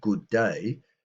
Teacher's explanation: The D is pronounced twice. Good. The D on the end of good and then day.